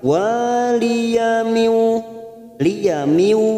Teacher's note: nun sukun bertemu waw, idgham bi gunnah, siap masuk pada huruf waw, kita tekan selama 3 harokat.